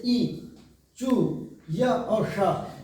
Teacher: इनको उच्चारण करते समय हमारी जीभ जो है वो तालु में लगनी चाहिए, उसको स्पर्श करना चाहिए, तब हमारे इन वर्णों का उच्चारण होता है।